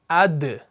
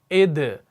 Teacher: دال کا مخرج بھی سیم وہیں سے ہے جہاں سے آپ نے تا کو ادا کر دیا، یہ بھی آپ کا مرقق ہے، باریک پڑھا جانے والا حرف ہے۔ تو آپ پڑھتے ہیں حمزہ دال زبر اد، حمزہ دال زیر اد، حمزہ دال پیش اد۔